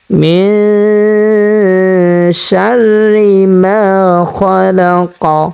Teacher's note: যেহেতু নুনে সাকিনের বামে আমরা শিন পেয়েছি, সে কারণে আমরা এখানে গুন্নার সহিত নাকের ভিতরে লুকাইয়া পড়ব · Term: ইকফা